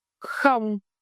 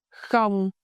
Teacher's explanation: This word had a flat, even tone, thanh ngang. Keep your voice steady.